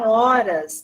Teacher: o H inicial sozinho não tem pronúncia